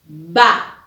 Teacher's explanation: Mis dos labios se unen para producir ese sonido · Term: B labial